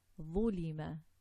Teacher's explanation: And isti'la. The tongue is raised at the back.